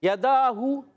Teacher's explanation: یداہو یا پر زبر ہے یا اور دال پر کھڑا زبر، اس کو یا کو نہیں کھینچنا مگر دال پہ ایک الف کھینچ کر ادا کریں گے. ہا پیش ہو یداہو، دیکھیں یا نہیں کھینچا، دال کھینچا اور ہا کی پیش کو بھی نہیں کھینچا، اس چیز کا آپ نے خاص خیال رکھنا ہے.